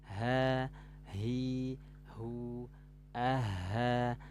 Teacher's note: Ini tenggorokan bawah. Aha, mengalir dari tenggorokan nih. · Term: huruf H